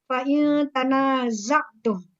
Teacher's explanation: Cara membacanya tadi disamarkan atau disengaukan. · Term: ikhfa